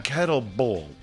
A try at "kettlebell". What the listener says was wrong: No, it's kettle, but it's kettlebell. Ball?